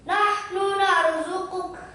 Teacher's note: Rohnya yang dibaca tebal, jangan cuma terpusat perhatiannya ke qaf sama kaf.